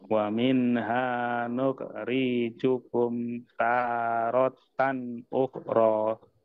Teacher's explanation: Tannya kebaca pendek harusnya panjang dan ro-nya kebalik lah istilahnya, kebalik ro sama ta panjangnya. Ditukar lagi Pak, ta yang panjang, ro yang pendek.